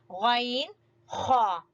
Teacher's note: غین خا، یہ حلق کا سب سے اوپر والا حصہ جس کو ابتدائی حصہ کہتے ہیں، وہاں سے غین خا ادا ہوتے ہیں